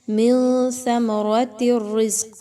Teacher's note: من ثمرات الرزق، اب اس میں دیکھیں تو نون ساکن بھی آ گیا اور ثمراتن میں تا کے نیچے 2 زیر کی تنوین بھی آ گئی ہے، نون ساکن کے بعد تا آ گیا، یہاں پر تو اخفا کیا جائے گا، نون کی آواز کو آپ نے ناک میں چھپانا ہے